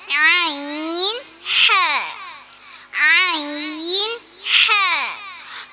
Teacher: തൊണ്ടയുടെ മധ്യഭാഗത്ത് നിന്ന് വരുന്ന അക്ഷരങ്ങളാണ് ഐൻ, ഹ, ഐൻ, ഹ.